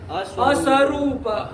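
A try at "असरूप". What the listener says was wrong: स्व क्यों पढ़ते हो तुम?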